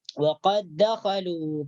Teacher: Kemudian dal mati bertemu dengan dal hidup atau dal berharakat, wa qad dakhalu. Jadi dal sukunnya atau dal sakinah di sini langsung dimasukkan ke dalam huruf dal yang berharakat. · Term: idgham mutamatsilain